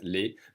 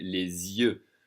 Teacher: So les alone, that's L-E-S. We don't say the S, les, but because it's followed by a vowel sound, we're going to say les yeux. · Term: liaison